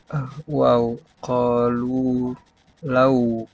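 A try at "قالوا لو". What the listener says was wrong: Law. Qalu law. Oke, bukan low ya. Oke, law.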